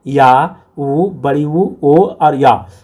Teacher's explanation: जिन स्वरों के उच्चारण में जिह्वा का पिछड़ा भाग, ठीक है, अर्थात पीछे का भाग सामान्य स्थिति में ऊपर उठता है उसे पश्य स्वर कहा जाता है